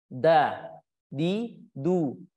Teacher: huruf Dal berada di ujung lidah bertemu dengan pangkal gigi seri atas